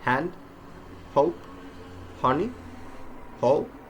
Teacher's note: it is pronounced with a strong loud airstream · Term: H sound